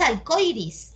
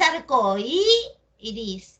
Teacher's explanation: Es evidente que la i suena más que la o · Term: yato acentuado